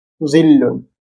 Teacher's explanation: জ এর মত তবে ভারীভাবে জিবা একটু বাহিরে আসে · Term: ভারীজ